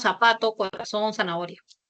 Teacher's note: Ese ceseo se refiere al hecho de que pronunciamos todo con la fricativa alveolar sorda, o sea, hacemos el sonido de la S, ¿no? Frente al sonido de la fricativa interdental.